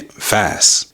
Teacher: So the t at the end gets dropped entirely. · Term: silent consonants